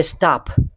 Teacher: you can say stop with the aspiration at the end